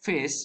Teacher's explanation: The usual pronunciation of the word fish begins and ends with the voiceless fricatives